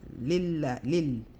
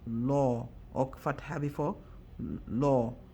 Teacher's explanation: if it's a kasra, we make it flat, we make the letter flat, the lam in Allah name flat